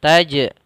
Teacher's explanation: Jim berharakat sukun maka ini kita namakan dengan Qalqalah maka jimnya memantul